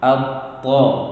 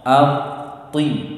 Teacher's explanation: Antara at-ta dengan ati di sana berbeda. Yang berubah adalah bibirnya.